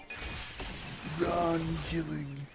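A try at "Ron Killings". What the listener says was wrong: No, not killing. It's multiple killings.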